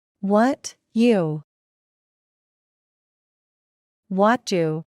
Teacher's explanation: cuando la T va seguida de la Y, forman el sonido que se usa para pronunciar la ch del inglés